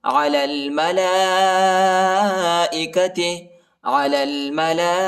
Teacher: ثم عرضهم على الملائكة، لام کو لام کے ساتھ ملائیں گے، یا اور الف نہیں پڑھا جاتا، یا اور الف پر حرکت نہیں ہے اور لام کے اوپر بڑا مد آیا ہے، اس کو تقریباً 3-4 سیکنڈ تک کھینچنا ہے۔